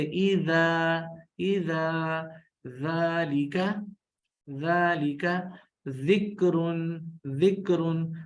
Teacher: زبان کی نوک ثنایا علیہ کے اندرون کے نچلے حصے میں ایسے لگے کہ سیٹی کی آواز پیدا نہ ہو